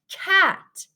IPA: k